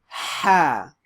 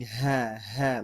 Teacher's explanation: little bit of effort it's a like an H sound but a very sharp H sound from the middle of throat